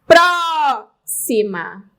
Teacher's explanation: Próxima. Sílaba tônica, antepenúltima. Olha, eu tenho uma proparoxítona aqui.